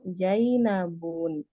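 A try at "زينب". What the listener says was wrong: ya, bukan jim ya, bukan jai, tapi za. Zainabu.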